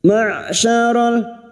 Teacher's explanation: Ma'syaral, huruf shin. Huruf shin makhrajnya ada pada wastul lisan atau tengah lidah, sama dengan makhrajnya jim dan ya.